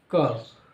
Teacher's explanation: कंठ से आवाज आ रही है का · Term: कंठ वर्ग